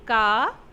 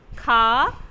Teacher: जब आप खा और घा को बोलेंगे तो ज़्यादा हवा निकलेगी। बोल के ट्राई करिए तो समझ में आएगा। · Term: महाप्राण